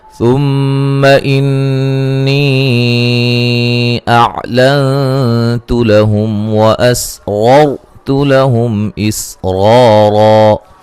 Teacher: میم مشدد پہ غنہ ضروری ہے. نون مشدد پہ غنہ ضروری ہے.